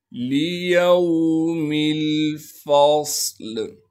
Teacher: لِيَوْمِ الْفَصْلِ، لام کو بغیر کھینچے پڑھیں گے، یا کو واو ساکن سے ملائیں گے، میم کو آگے لام ساکن سے ملانا ہے کیونکہ لام ساکن ہے، فا کو صاد ساکن سے ملائیں گے، صاد میں سیٹی ادا کریں گے اور صاد کو موٹا کر کے پڑھیں گے، لام کو وقف کی حالت میں ساکن بنا دیں گے